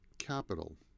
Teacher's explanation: And the T in capital sounds more like a D.